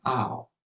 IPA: AU